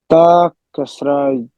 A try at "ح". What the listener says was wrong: This one, not ta. Ta looks like. Yes, ha, simple ha.